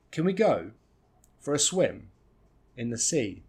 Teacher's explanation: the first 2 words are function words, so we don't stress them